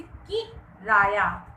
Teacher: किराया में क पर बल दिया गया है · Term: शब्द बलाघात